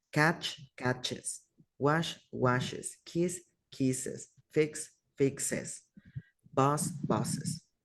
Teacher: Al hablar de goes, le digo la E así cortita más la S. Pero, por ejemplo, con la CH, SH, S, X o Z, pronunciamos es.